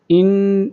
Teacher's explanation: ان یہاں پہ غنہ ہو رہا ہے، ان ایسے کرنا ہے اور نون کو لام کے ساتھ ملانا ہے۔